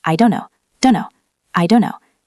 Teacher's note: In the most relaxed form, the T and the N and the D all start to blend.